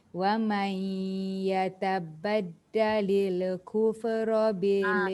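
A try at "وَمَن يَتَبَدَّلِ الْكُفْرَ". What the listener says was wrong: La mati, kaf mati, fa mati. Jangan dihidupkan. Yatabaddalil kufra bil.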